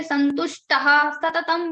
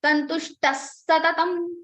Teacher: So if after ha visarga you have sa, sha, then the visarga will be converted into the same sha.